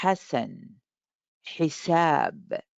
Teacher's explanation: The left and right side in your throat, like coming close to each other, like try to touch each other, but they will not. Ha, ha, and you will feel the jaw, the lower jaw, kind of go a little bit to the back to create the sound.